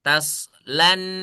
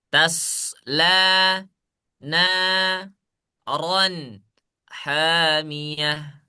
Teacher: Lamnya jangan ditasydidkan ke nun.